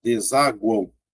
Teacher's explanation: Veja que a letra U é pronunciada, tá vendo? Então ela já é uma semivogal.